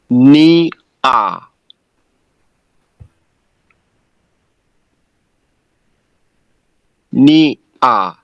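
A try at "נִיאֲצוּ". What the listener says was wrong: Careful with the last vowel. That's a shuruk. Makes the u sound. Ni atsu.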